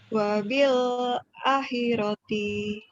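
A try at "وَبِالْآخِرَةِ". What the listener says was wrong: wabil A-nya panjang tuh ya. Wabil akhirati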